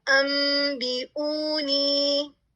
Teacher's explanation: نون ساکن یا تنوین کے بعد حرف با آئے تو ہم اس سے میم میں بدل دیں گے · نون کو میم سے بدل دیا. با کو نہیں ہم بدلیں گے. ہو سکتا ہے کہنے میں نے اس طرح سے کہہ دیا ہو، با کو آپ نہیں بدلیں گے، آپ پڑھیں گے انبئونی. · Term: اقلاب